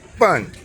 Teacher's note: bun in the fourth tone